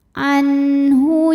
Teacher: cara bacanya nun sukun dibaca jelas izhar